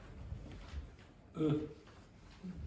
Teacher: And it's lazy because the tongue is in the intermediate position. So it's not forward and back, it's in the middle. And the mouth is in the most relaxed position. It's not really closed or really widely open. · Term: schwa